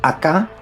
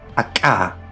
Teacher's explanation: to stress the double sound, we turn it into an ejective